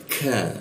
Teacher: Mada ka huruf ka di jakun posisinya di tengah di siku tenggorokan, lidahnya diturunkan sehingga rongga udara terbuka dan dibacanya itu ada hembusan udara. Ka ya.